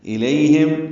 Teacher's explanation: ہم میں میم ساکن پہ اظہار شفوی ہے